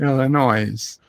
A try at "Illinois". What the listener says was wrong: No, it's the S is silent. It's Illinois.